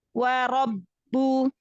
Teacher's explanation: Wa rabbu huruf ba itu syiddah jahar. Tampakkan syiddah jahar pada huruf ba.